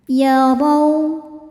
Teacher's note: Ro dibaca secara tafkhim karena berharokat fathah. Cara bacanya ditebalkan.